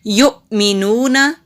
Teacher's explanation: یا کے اوپر پیش ہے اور حمزہ ساکن ہے، جھٹکے سے پڑھیں گے